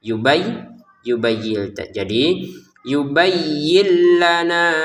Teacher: karena di depannya ada lam maka kita masukin nun sukun ini ke lam